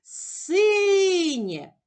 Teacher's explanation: Наголос падає на перший склад